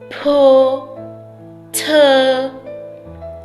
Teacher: Pour la prononciation de la lettre P et de la lettre T, vous devez sentir lors de la prononciation une légère poussée d'air. Une légère poussée d'air qui va traverser vos lèvres.